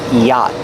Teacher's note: yacht the CH is silent dough pronounce the CH it's yacht the vowel ah is the open ah sound like hot and stop together yacht the t is a stop T at the end after